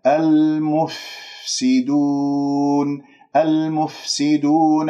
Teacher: المفسدون لا تسحب ضمة الميم إلى الفاء الساكنة، تقول المف خطأ المفسدون، والفاء الساكنة تتجلى فيها الصفات، يعني يجري فيها الصوت ويجري فيها النفس لأنه الفاء مخرجها ضعيف فتحتاج إلى هذه المساعدات حتى نسمعها، وخاصة لما تكون ساكنة.